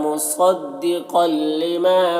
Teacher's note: مریم میں را کو پر پڑھیں گے، مصدق یہاں پر صاد کو پر پڑھیں گے، قل یہاں پر قوف کو بھی پر پڑھیں گے، حروف مستعلیہ میں سے ہے اور یہاں پر تنوین کے بعد لام ہے تو تنوین کو لام سے ملا کر بغیر غنہ کے پڑھیں گے، اس کو ادغام تام کہتے ہیں۔